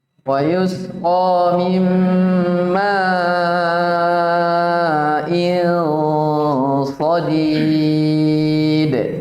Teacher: Tebalkan. Langsung tebalkan dengan mengangkat lisan ke langit-langit. Karena asalnya memang sifat ketebalan itu ya lisan terangkat ya.